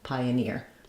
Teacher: a little y connects them because of vowel-to-vowel linking, pioneer. You won't see it in the dictionary, but that vowel-to-vowel linking will happen.